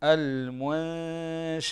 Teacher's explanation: بس انتبه يا شيخ للإخفاء، عندنا النون الساكنة كما ذكرنا بعدها حرف الشين والشين من حروف الإخفاء الحقيقي، فتخفي النون الساكنة عند حرف الشين كما سبق أن قرأنا المنشآت، والغنة تكون بمقدار حركتين